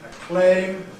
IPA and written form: əˈkleɪm (acclaim)